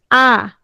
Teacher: বিবৃত মানে ঠোঁটটা ছড়িয়ে যাবে আ বলার সময় কি হয় দেখো তো ঠোঁটটা আ ঠোঁট কি